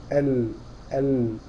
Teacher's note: الضاد حافه اللسان، الحيز الذي تشغله الضاد من حافتي اللسان اهو، فتخلي حافه اللسان تضرب في الاضراس العلويه، أض أض أض، بيحصل انك تحول اللسان، تخلي حافه اللسان جنب اللسان يضرب في الاضراس العلويه. طب اللام من ادنى حافتي اللسان